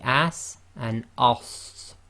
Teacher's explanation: So with the sin it will be as, with the za it will be as, and with the sad it will be as. So the sad is effectively the heavy full mouth version of the sin. So if we compare the sin to the sad, it will be as and as.